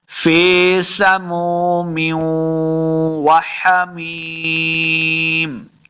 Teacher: فی سموم، پھر آگے دیکھیں میم کے نیچے زیر کی تنوین ہے، آگے واو مشدد ہے، واو حروف یا ملون سے ہے نا، تو ہم نے میم کو واو کے ساتھ ملانا ہے، غنہ بھی کریں گے